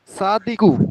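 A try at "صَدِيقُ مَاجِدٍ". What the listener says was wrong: সাদিক হবে না, সদিক ও মাজিদিন।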